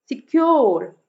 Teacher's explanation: सिक्योर, क्योर पे stress है। तो सेकंड सिलेबल जो स्ट्रेस्ड होगा, फर्स्ट सिलेबल अनस्ट्रेस्ड होगा, इसको हम आयम्बिक मीटर कहेंगे।